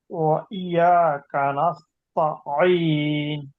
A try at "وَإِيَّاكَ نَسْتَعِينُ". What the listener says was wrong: ওয়া ইয়া টান হবে।